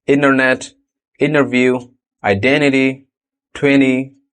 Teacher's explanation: when T is after N, it's often deleted in casual speech.